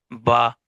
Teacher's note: تو با جو ہے وہ تری والے حصے سے ادا ہوتا ہے. تو چونکہ میم کے بعد با آ رہا ہے تو ہم نے غنہ بھی کرنا ہے تاکہ میم کا مخرج بھی ادا ہو جائے اور ہم نے جو ہے وہ پھر با کو بھی ادا کرنا تاکہ با کا مخرج بھی ادا ہو جائے.